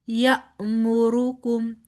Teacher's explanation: حمزہ کے اوپر جزم ہے لہٰذا یہاں پر جھٹکے سے ادائیگی ہوگی